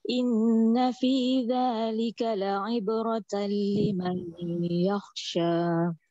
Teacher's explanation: Za tu lembut sikit sebab dia zal. Dia di hujung gigi.